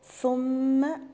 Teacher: ثم الثاء من الحروف اللثوية اللي بخرج فيها طرف اللسان، والميم المشددة غنة بمقدار حركتين، يعني أقول ثم وما أعملش، ما جيبش مد بعد الميم، ما أقولش ثم ذهب، لأ أقول ثم ذهب إلى، هنا مد 4 حركات، ده مد جائز منفصل.